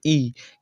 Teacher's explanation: ई क्या होता है, जीभ का अगला हिस्सा उठता है। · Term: अग्र स्वर